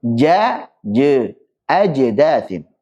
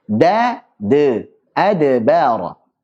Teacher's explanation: membaca qalqalah itu dengan suara yang dekat ke fathah, tapi bukan fathah. Contoh misalkan, untuk huruf yang tipis kita tipiskan, yang tebal kita tebalkan, tapi suara qalqalahnya lebih dekat ke fathah.